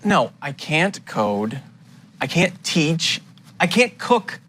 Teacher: that a held T instead of pronouncing the T your tongue just comes to a stop against the hard part of the roof of your mouth just behind the Upper Front Teeth